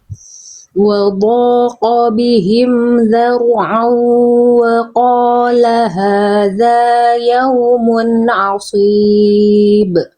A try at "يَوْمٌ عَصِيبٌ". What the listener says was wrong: Tegaskan lagi tebal sodnya. Yaumun asib. Nah, ingat lidahnya naikin.